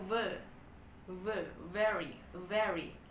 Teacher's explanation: dia tuh lebih ada getarannya teman-teman jadi dia adalah voiced